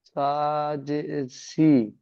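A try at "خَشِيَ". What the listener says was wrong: শিন জের শি, সা নয়, শিন জের শি, খসি, ইয়া জাবার ইয়া।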